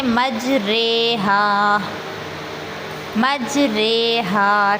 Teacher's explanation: الف کو یا کی طرف، زبر کو زیر کی طرف مائل کرنا ہے۔ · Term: امالہ